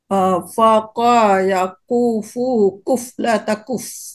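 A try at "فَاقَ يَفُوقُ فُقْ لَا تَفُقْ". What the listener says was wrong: Hurufnya tertukar. Fa dulu, bukan kof dulu.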